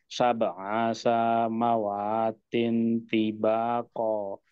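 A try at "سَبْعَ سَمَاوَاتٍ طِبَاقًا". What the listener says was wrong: sinnya tidak panjang Pak ya sinnya Yang ini tidak panjang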